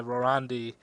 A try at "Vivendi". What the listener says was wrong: Vivendi. There's no R. No R.